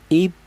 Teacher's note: Ketika huruf qalqalah itu berupa huruf qalqalah yang mati seperti ini. Jadi huruf ba ini termasuk huruf qalqalah, di mana ini posisinya mati, maka cara bacanya itu dibaca qalqalah, yaitu ada suara pantulan ib seperti itu.